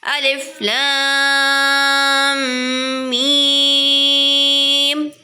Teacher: الف پر کوئی حرکت نہیں ہے اس لیے الف کو نہیں کھینچیں گے